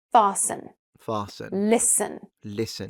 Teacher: It's easier to say without the T sound.